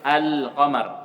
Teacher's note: Izhar artinya dibaca dengan jelas lamnya ketika bertemu dengan kata yang awalnya huruf qamari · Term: izhar qamar